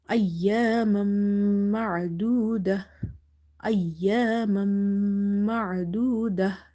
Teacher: After two fathas you have letter mim. So here will be idgham with gunna.